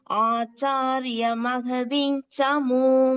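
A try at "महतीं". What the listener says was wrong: Mahating no. You are saying Mahading. Mahating. Ta. First ta.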